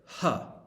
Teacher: glottal consonants glottal just means in your throat basically that's ha the letter H the sound